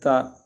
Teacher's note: اوپر کے جو سامنے کے جو دانت ہے دانتوں کی جو جڑ ہے تالو جو اس کے ساتھ جو تالو لگا ہوا ہے وہاں سے یہ حرف تا ادا ہوتا ہے